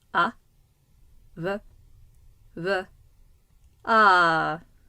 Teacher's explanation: It's always over a long vowel, and it has a tone pattern like ah, either low, high, low, ah, or high, low, ah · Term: circumflex accent